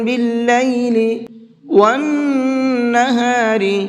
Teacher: نون کے اوپر تشدید ہے تو یہاں پر غنہ کریں گے، اور را کو باریک کر کے پڑھیں گے